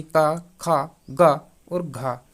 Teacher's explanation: यह जो वर्ण है दोस्तों यह किससे बोले जाते हैं, तो यह कंठ से बोले जाते हैं। कंठ आप समझ रहे होंगे जो गर्दन में होता है उसको हम कंठ कहते हैं।